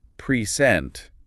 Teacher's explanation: If you stress the first syllable present, you're talking about a noun like a gift